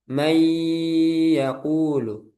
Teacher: Nah, nunnya di sini dibaca jelas. Tapi ketika nun sukun bertemu ya, maka nunnya diidgamkan.